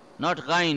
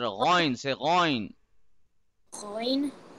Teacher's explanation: Not ghain, it's ghoin. The oh sound should be there. It's a heavy letter.